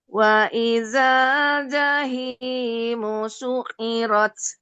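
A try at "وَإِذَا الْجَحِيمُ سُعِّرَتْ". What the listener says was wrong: Su'airat. Su'airat. Ini a-nya nih. A-nya yang tasydid. Jadi yang ditahan adalah ainnya. Su'airat.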